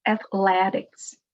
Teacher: The stress is before the last syllable. Athletics. It's very common in English to put the stress on the syllable right before the ick or x.